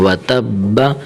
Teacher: آخر میں با کو تھوڑا سا قلقلہ دینا ہے، و تب، با کو ہلانا ہے، قلقلہ مطلب ہلانا ہے، و تب، ٹھیک ہے۔